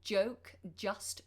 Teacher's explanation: J is at the front of the mouth with the tip of the tongue